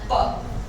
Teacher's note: अनवॉइस्ड है, और उसका प्लेस ऑफ आर्टिकुलेशन बाइलेबियल है, दोनों लिप्स। और मैनर ऑफ आर्टिकुलेशन, पी बोलने के लिए दोनों होठों को दबाते हैं, पी चिपक के, है ना, फिर खुलता है, उसको कहते हैं प्लोजिव या स्टॉप, प्लोजिव या स्टॉप।